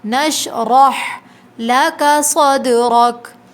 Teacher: دال پہ قلقلہ ہوگا، صاد کو موٹا پڑھیں گے